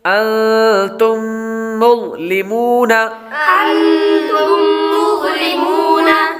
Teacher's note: انتم یہ میم ساکن کے بعد دوسری میم آ رہی ہے تو اس لیے میم ساکن پر غنہ کریں گے۔ انتم، تم، یہ غنہ کر کے پڑھیں گے۔